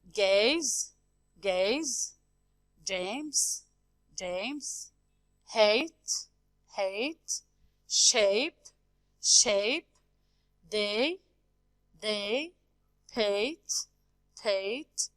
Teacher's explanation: they have the sound which is diphthong, which is E and I